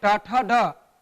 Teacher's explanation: तो जीभ का अग्र हिस्सा जाकर के मूर्धा को स्पर्श करता है